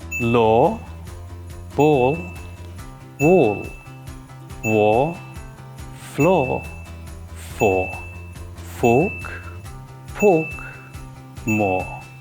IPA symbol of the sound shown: ᴐ: